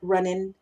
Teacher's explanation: el acento tejano o los acentos del sur de Los Estados Unidos generalmente eliminan la G Al final de palabras como running ing ese ing pasa de ser in entonces eliminamos la G